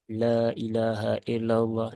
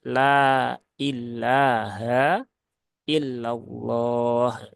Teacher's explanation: lamnya menebal Lailahaillallah nah gitu harusnya dia ditipiskan ya lailaha illallah yang tebal baru yang lafaz Allahnya ya kalau yang lain tadi dia dia tipis · lam dan Ha ini dua-duanya huruf tipis ya maka ya tipiskan biasa bukan la tapi la la l Ha la begitu ya nah